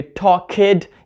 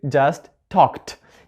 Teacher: word we do not use our voice to pronounce it so the ending ed is going to be voiceless